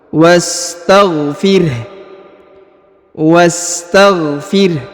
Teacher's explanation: huruf wa langsung disambung masuk ke huruf sa berharakat sukun